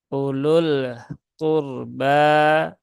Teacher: tidak perlu dibaca panjang menjadi Ulu tetapi langsung ya u-nya satu harakat